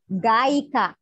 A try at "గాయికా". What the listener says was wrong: గాయిక దీర్ఘం